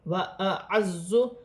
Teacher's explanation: وَأَعَزُّ، عین اور حمزہ ایک ساتھ ہیں، اپنے اپنے مخرج سے ادا کیا جائے گا. زا سیٹی والا حرف ہے، جماؤں کے ساتھ ادا کیا جائے گا اور مشدد بھی ہے